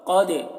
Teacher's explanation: قاف کو پر پڑھیں گے، اور دال میں قلقلہ ہوگا،